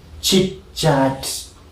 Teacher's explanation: Okay, so an affricate consonant is a consonant in the production of which the active articulator and the passive articulator come to a contact with each other, and there is a slow release of air